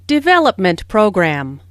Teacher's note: since these two words make a compound noun the main stress falls on develop